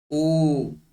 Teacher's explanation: किंचित ओष्ठस्य अपि प्रयोगः भवति, कंठस्य अपि प्रयोगः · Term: कंठौष्ठम